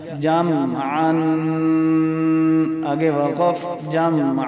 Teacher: دو زبر ہیں تو وقف میں ایک زبر پڑھیں گے